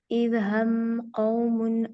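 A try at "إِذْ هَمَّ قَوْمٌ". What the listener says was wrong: अच्छा यहाँ पर देखिए, इज हम्मा, मीम के ऊपर क्या होगा? गुन्ना। क्योंकि मीम और नून के ऊपर जब भी शद आ जाएगी आपने क्या करना है? गुन्ना कर देना।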